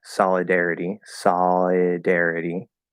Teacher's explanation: the L because it's a half L vowel sound it can flow into the next vowel · I'm not actually saying the O there it's just a half l or a dark L